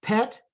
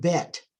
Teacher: ET part is the same and the PB is different so they're both bilabial they're both stops they only differ in voicing